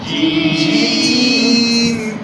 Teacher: زبان کی پشت اور اس کے مقابل اوپر کے تالو کے ملاپ سے کیا ادا ہوتا ہے بیٹا؟